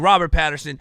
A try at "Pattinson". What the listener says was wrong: Pattinson. You always say Patterson.